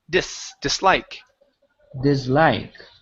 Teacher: Give me an unvoiced S.